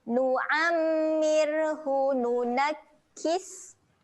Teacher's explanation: huruf sin ketika mati sifatnya keluar angin.